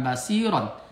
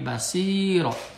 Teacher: Dalam keadaan waqaf berhenti dibaca 2 harokat dan tanwinnya dihilangkan. Jadi bukan basiron tapi basiro. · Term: mad iwad